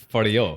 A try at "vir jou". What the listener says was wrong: So in Afrikaans, you got to say the R, like